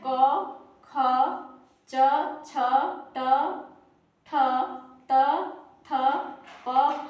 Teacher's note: इसका पहला वर्ण और दूसरा वर्ण यह कहलाता है अघोष